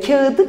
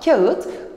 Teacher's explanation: I ünlüsü geldiği zaman T sert sesinin D yumuşak sesine dönüştüğünü görmemiz mümkündür.